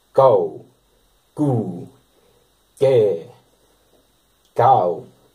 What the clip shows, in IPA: kou(ː) , ku(ː) , kjɛː , kauː